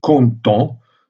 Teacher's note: dans la prononciation, le A et le E nasalisés ont la même prononciation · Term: voyelles nasalisées